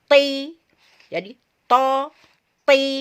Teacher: ketika diberi harokat kasro, dia tetap tebal, tetap ditempelkan di bagian atas dan tetap terangkat lisan kita